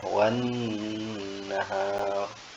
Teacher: artinya dibaca tasydid dengan gunnah dengung ya